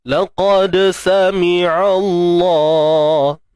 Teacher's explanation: Huruf dal. Yang sukun tuan-puan kat sini qalqalah sughra. Lantunan kecil ataupun lemah.